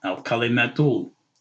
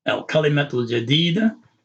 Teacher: Remember we said that with this aleph here, whatever is the last vowel here, which is the dhamma, okay, al-kalimatu, this dhamma, the u sound goes past this aleph to the lam